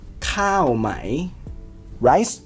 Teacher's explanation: The word cow stays falling. It does not move.